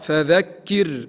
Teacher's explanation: الراء هنا قبلها كسر رقها